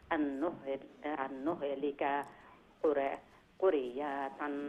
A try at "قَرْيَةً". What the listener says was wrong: কার কার কাফর উপরে জবর কারিয়াতান